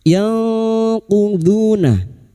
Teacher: nun sukun bertemu qof ik hakiki. Kita samarkan bunyi nun sukun dan mendengung selama tiga harakat.